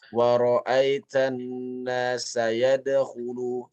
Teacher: Qalqalah pada bacaan ayat nomor 2, ya ayat yang kedua, ini adalah qalqalah yang kecil. Ya, jadi jangan dibaca dia dengan besar. Contohnya membacanya wa ra'aitan nasa yadkhulu, dia mengalir saja.